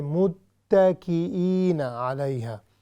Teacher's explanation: چونکہ تا پر ہے, شدہ ہے, تشدید ہے, تو ہم نے اس کی پوری ادائیگی کر کے پھر آگے جانا ہے